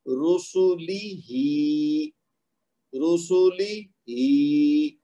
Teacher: ہا کو 2 حرکت تک کھینچ دیں گے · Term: کھڑی زیر